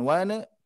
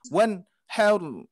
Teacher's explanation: tidak diberhentikan tapi wan dialirkan saja karena dia sifatnya mendengung